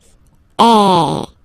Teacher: So it's really open. I mean, the sound is really open, and normally your mouth should be opened a little bit more than with the accent aigu as well. Okay, so it goes like A. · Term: accent grave